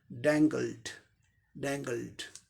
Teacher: ल sound voiced है, इसलिए इसके साथ ईडी का उच्चारण क्या हो जाएगा, ड, डैंगल्ड, डैंगल्ड।